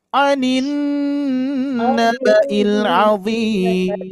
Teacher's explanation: Irama ras yang ketiga turun anin naba'il azim.